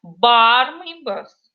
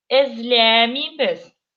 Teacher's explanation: А ударение всегда ставится перед отрицательным аффиксом.